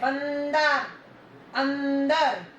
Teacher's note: बंदर, अंदर, इसकी आवाज नाक से निकलती है अनुस्वार की, जो ऊपर बिंदी लगती है।